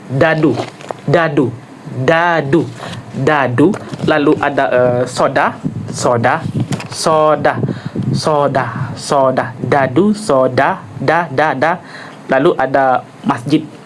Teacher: yaitu hamat alveolar bersuara